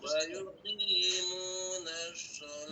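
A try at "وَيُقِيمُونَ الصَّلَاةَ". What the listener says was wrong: Ah, itu masih shin. Masih shin. Shalah. Ini harusnya shalah biasa. Karena huruf shad itu, karena ditulis pakai SH, jadi kayak shin jadinya dibaca orang.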